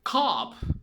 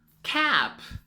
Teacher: ¿Notan cómo la mandíbula cae para decir policía? Cop. Y luego se expande para decir gorra.